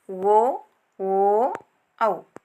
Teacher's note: ಅಕ್ಷರಗಳೆಂದರೆ ಕಂಠ ಎಂದರೆ ನಮಗೆಲ್ಲ ಗೊತ್ತಿರುವ ಹಾಗೆ ಗಂಟಲು ಓಷ್ಠ ಎಂದರೆ ತುಟಿ ಅಂದರೆ ಗಂಟಲು ಮತ್ತು ತುಟಿಯನ್ನು ಎರಡನ್ನು ಬಳಸಿ ಉಚ್ಚರಿಸಲ್ಪಡುವಂತಹ ಅಕ್ಷರಗಳು ಕಂಠೋಷ್ಟ ಅಕ್ಷರಗಳು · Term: ಕಂಠೋಷ್ಠ ಅಕ್ಷರಗಳು